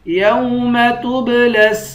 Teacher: تا کو با کے ساتھ ملا کر با پر قلقلہ کریں گے